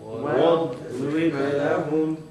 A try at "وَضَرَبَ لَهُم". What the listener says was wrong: And there's a qalqala, right? At the end. On the ba. No air. You can't say وضرب لهم. It's one process. وضرب لهم.